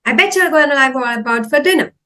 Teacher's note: instead of saying bought, the T sound is not that clear. It becomes like D sound.